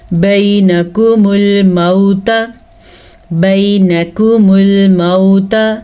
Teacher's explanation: یا لین کو نرمی کے ساتھ پڑھتے ہیں اور بغیر کھینچے پڑھتے ہیں, بغیر لمبا کیے پڑھتے ہیں.